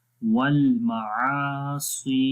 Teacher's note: आइन के ऊपर ज़बर है और उसके बाद अलिफ, यानी अलिफ ज़बर के बाद आ रहा है, तो यहाँ पर भी 1 सेकंड लंबा करेंगे।